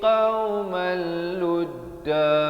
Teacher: idgham bila gunnah qauman jadi qaumal, terus masuk tanpa dengung.